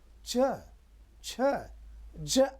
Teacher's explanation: ताल तालम तलवा जो ऊपर जीभ के ऊपर है वहां जीभ को स्पर्श करते हैं